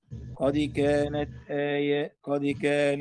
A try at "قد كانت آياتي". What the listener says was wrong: لا لا آيات لا لا لا قد كانت قد كانت آياتي لا في قلقلة لكن مو بكسر هالدرجة قد كانت آياتي